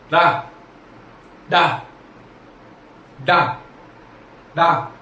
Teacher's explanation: इन्हें बोलते समय जीभ ऊपर जाके एकदम झटके से नीचे आती है। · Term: विशिष्ट व्यंजन